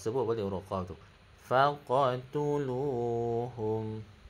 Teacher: Huruf qaf ni dia ada lantunan qalqalah sikit.